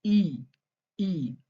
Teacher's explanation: This is long, clear E sound. Hold it longer than you would, in English.